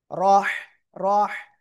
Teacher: জবর থাকলে র অক্ষরটা মোটা আওয়াজে পড়তে হয়